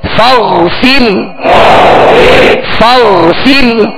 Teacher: را کو باریک پڑھیں گے، را ساکن سے پہلے زیر اسی کلمے میں ہے